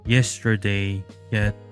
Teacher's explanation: The open mid front unrounded ye can be heard in yesterday, yet